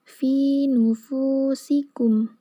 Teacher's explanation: Jadi keluarnya itu sempit antara ujung lidah dengan dua gigi seri. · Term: sifat shofir